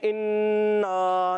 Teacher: नून मुशद्दद में हमेशा एक अलिफ का गुन्ना करते हैं, ये याद रखना है।